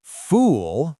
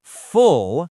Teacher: Fool, long, tight lips. Don't be a fool. Full, short, relaxed.